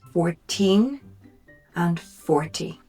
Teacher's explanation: 14, the stress is on the second syllable, whereas 40, the stress is on the first syllable.